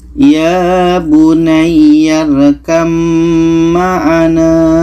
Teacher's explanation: Maka di sini ada ba bertemu mim. Maka bunyi ba ini terus kita masukkan ke mim. Oke, bunyi ba ini tidak kita baca lagi.